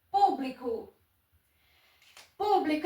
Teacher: A sílaba tônica é a antepenúltima, então ela é uma proparoxítona.